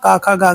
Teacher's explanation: कंठ किसका उच्चारण स्थान होता है तो क वर्ग का होता है